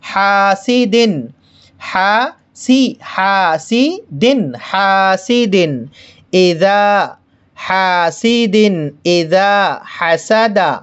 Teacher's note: حاسد، حاسد، اذا حسد، حاسد، یہاں پر دیکھیے ہمیں جو دیکھنا ہے یہ دو زیر ہے، دو زیر کی تنوین ہے، دو زیر کے بعد حمزہ آ رہا ہے، اس لیے تنوین کو ظاہر کر کے پڑھیں گے، غنہ نہیں ہونے دیں گے، بغیر غنے کے ظاہر کر کے پڑھیں گے